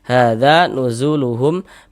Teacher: Maka huruf yang memiliki harokat fathah dibaca panjang. Sehingga za dibaca panjang. Mad tabi'i panjang 2 harokat.